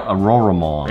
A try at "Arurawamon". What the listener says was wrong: It's not Aurora. It's Arura.